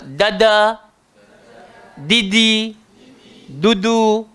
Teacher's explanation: Dal ni tadi macam tak, dal ni tadi macam tok. Hujung lidah, langgar belakang gigi atas. Dan sifat dia sederhana.